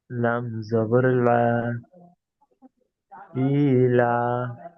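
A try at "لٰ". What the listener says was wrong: লাম জবর লা নয়, ওটা লাম খাড়া জবর লা।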